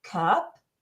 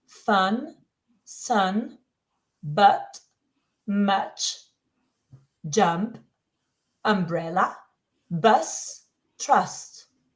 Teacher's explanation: it's a relaxed neutral sound your tongue stays in the middle of your mouth